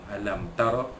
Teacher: ra dibaca tebal kembali atas, ra tafkhim